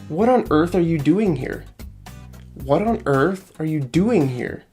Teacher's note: the stress is on the first syllable, doing. Earth and what both just have one syllable.